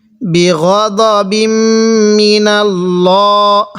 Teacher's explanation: হ্যাঁ, মোটা করে পড়ব, কারণ আল্লাহ শব্দের লামের পূর্বে এই যে জবর থাকার কারণে এই লামটিকে মোটা করে পড়ব।